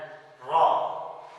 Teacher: रॉ को देखते हैं हमारी आवाज़ जो है थोड़ी सी भारी हो जाती है। जब भी हम पढ़ेंगे इसको रॉ तो हमारी जुबान जो है ऊपर वाले मसूड़ों के बिल्कुल पास जाकर लगती है